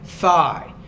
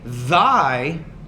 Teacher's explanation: we're talking about the interdental consonant. We're looking at it either from a voiceless or a voice perspective. So if I say thigh, there's no vibration here in the vocal folds in my throat when I say it.